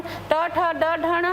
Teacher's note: लेकिन हम ट ठ ड ढ ण कहते हैं तो जीभ थोड़ी सी पीछे जाती है और ऊपर ठोकता है तो इसे हम रेट्रोफ्लेक्स या मूर्धन्य वर्ण कहते हैं, जिसका वर्ग का शुरुआत ट से होने की वजह से ट वर्ग का वर्ण कहा जाता है।